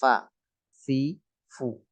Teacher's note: Alfafa, fa fa fa. Bibir bawah ketemu gigi seri atas fa, fi, fu. Termasuk huruf bibir.